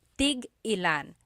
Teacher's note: Tig-ilan is a homonym, meaning it can have different translations depending on how it's pronounced. So tig-ilan, when there's a hyphen in it, you have to have that glottal stop.